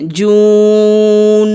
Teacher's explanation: گنہ بھی کریں گے، نون کے اوپر تشدید ہے، مد کے ساتھ بھی گنہ کریں گے